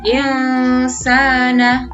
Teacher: nun sukunnya tidak dibaca dengan jelas. Seperti dibaca antara huruf n dan eng. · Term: ikhfa